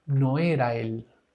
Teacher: necesitamos encadenar, necesitamos combinar. No era él en un solo sonido.